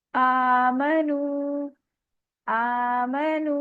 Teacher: हमजा के ऊपर खड़ी जबर है, ये भी 2 काउंट स्ट्रेच होगा।